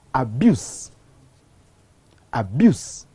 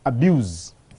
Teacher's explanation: the change of the final sound from s to z in some of the words